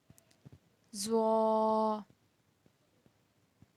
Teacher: زبان کی نوک جب اوپر والے اگلے دانتوں کی نوک والے حصے سے لگے تو ادا ہوتا ہے زوا